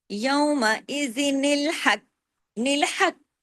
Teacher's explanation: ہا گلے سے قاف ہیوی کر کے اور ڈبل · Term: کلکلا